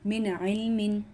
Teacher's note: نون ساکن کے بعد عین کا لفظ آیا تو اس کو ہم ظاہر کر کے پڑھیں گے